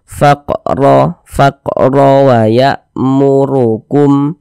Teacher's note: maka huruf ro dibaca tabkhim, tebal, sehingga pangkal lisan kita naik terangkat ke atas ketika kita mengucapkannya. Tebal kan huruf ro-nya.